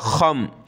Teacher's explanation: गले से निकाल कर मोटा करके खा पढ़ना है